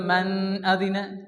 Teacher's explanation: যদি কেউ বলে মান আদিনা কারণ নুন সে কিন্তু এখানে আছে নুন এর পরে কি আসছে হামজা আসছে এজন্য এখানে কিন্তু কি হবে কোন গুন্না হবে না তার কারণ এটা হচ্ছে ইজহারের হালকিতে যেতে ছয়টি অক্ষর হামজা হামজা